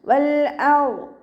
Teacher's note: വാദിൻ്റെ മഖ്റജ് നമ്മുടെ ഹഫത്തുൽ ലിസാൻ, നാവിൻ്റെ സൈഡ്, നാവിൻ്റെ കട്ടി കൂടിയ ഭാഗവും അതിൻ്റെ മുകളിൽ നിൽക്കുന്ന മേലെ അണപ്പല്ലുകളുടെ ഉൾവശത്തെ മോണയിൽ വെക്കുന്നതോടൊപ്പം തന്നെ നാവിൻ്റെ ബാക്ക് നല്ലോണം മുകളിലേക്ക് ഉയർത്തി കൊടുക്കുക കേട്ടോ. വൽ വാദ് ഇത്ബാഖിൻ്റെ അക്ഷരം കൂടിയായതുകൊണ്ട് നാവിൻ്റെ ബാക്ക് നല്ലോണം മുകളിലേക്ക് ഉയർത്തിച്ചരിച്ചു കൊടുക്കുക.